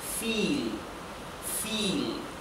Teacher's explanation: Y recuerden que en alemán, además de que la V se pronuncia como la F, la I con la E se pronuncia I, como una I larga de español